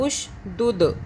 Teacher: دال پہ قلقلہ جھٹکا کیا